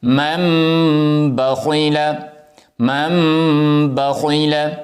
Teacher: میم کو میم کے ساتھ ملائیں گے، نون کی آواز نہیں آئے گی